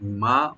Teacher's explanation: নিসফু মা তারাকা, মা মানে যা কিছু, মা মিম ওপেন রেখে একাল টানবেন